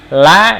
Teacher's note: untuk la dia lidahnya ke langit-langit dulu gitu ya. La dari langit-langit diturunkan.